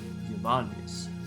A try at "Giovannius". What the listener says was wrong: You gotta hit the V. Giovannius.